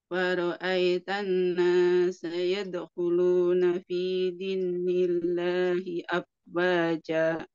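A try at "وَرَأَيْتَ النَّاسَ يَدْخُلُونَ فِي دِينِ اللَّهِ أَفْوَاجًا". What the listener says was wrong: Baik, ini mat tabi'i ya, bukan tasydid. Yadkhuluna fi dinillah itu tasydid, tapi ini dipanjangkan saja. Wa ra'aitan nasa yadkhuluna fi dinillah.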